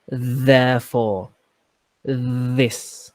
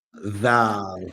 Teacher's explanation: you put your tongue in your teeth and it's a vibration sound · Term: Dhal